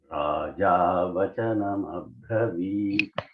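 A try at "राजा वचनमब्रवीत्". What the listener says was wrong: Abravit should not come. Mabravit. Bra should not come. B. Alpa prana.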